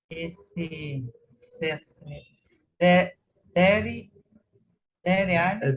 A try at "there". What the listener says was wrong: Esquece desse é no final, sempre esquece.